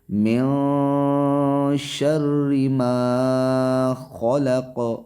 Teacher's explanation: نون ساکن کے بعد یا تنوین کے بعد اگر حروف اخفا میں سے کوئی حرف آ جائے، جیسے کہ شین حروف اخفا میں سے ہے، تو وہاں پہ ایک الف کے برابر ناک کے اندر آواز کو چھپانا ہے۔